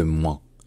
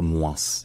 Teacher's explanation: il y a une prononciation qu'on trouve beaucoup dans le sud-ouest de la France, qui est de dire moins, de prononcer le S